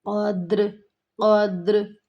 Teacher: اکثر ہماری اس لفظ پہ غلطی آتی ہے، قدر، قدر، دال کے اوپر ہم لوگ زبر لگا کے پڑھ رہی ہوتی ہیں، دال کے اوپر زبر نہیں ہے، دال خود سے ہی ساکن ہے، قدر، ساتھ میں قلقلہ ہوگا، یہاں پہلے قلقلہ کرنا ہے ہمیں، قلقلے کے ادائیگی کو کمپلیٹ کرنا ہے، اس کے بعد ہمیں رے کی ساؤنڈ آئے گی